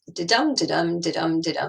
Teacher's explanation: And iamb is known as a poetic foot, and it consists of one unstressed followed by a stressed syllable